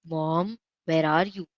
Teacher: This is more like rising questioning tone. Mom. So the tone mark for that is also like a rising rising uh tone because we are saying like mom it's our voice is a little bit rising.